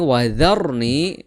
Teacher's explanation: Kemudian huruf sebelum ro itu berharakat fathah. Maka ronya itu dibaca dengan tafkhim atau tebal